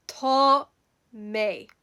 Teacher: And that A sound sounds like an aw. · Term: A father